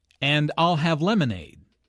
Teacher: Notice how stresses I'll and lemonade to emphasize her choice.